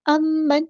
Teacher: نون ساکن کے بعد ہا یا حروف حلقی میں سے ہے، تو یہاں پر اظہار ہوگا۔